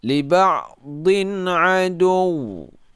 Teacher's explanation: tidak dengung, tidak memanjangkan suara yang keluar dari hidung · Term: idhar